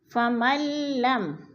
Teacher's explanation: میم کو ہم نے لام کے ساتھ ملا کر ادغام کرنا ہے، درمیان والا نون ساکن نہیں پڑھا جائے گا، کیونکہ مشدد حرف جو ہوتا ہے نا پچھلے متحرک حرف کے ساتھ مل کر پڑھا جاتا ہے، ساکن حرف کے ساتھ نہیں۔